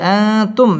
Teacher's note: মিম সাকিনে ইজহারে খাস গুন্না ছাড়া পড়তে হবে